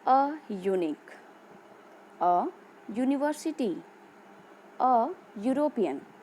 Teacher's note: the words unique, university, European start with vowel letter but produces the sound of a consonant Y.